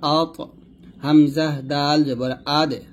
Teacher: যদি জজম দিয়ে বলি, ত এবং দাল কলকল হবে